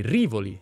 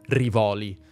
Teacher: La pronuncia corretta è Rìvoli, non Rivòli